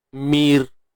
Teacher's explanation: Tapi kalau ra mati sebelumnya baris bawah, mir, nipis.